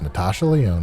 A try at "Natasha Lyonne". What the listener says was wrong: It's pronounced lion. Natasha Lion. You said Leon.